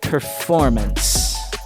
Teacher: there's a schwa at the end of the word, right before the NCE